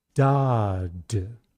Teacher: If you keep your focus on da, you should find that you use very little breath when you say the unstressed d.